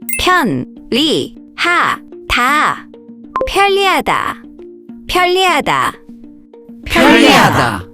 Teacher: When 니은 and 리을 come next to each other, the 니은 often changes to an 리을 sound. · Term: lateralization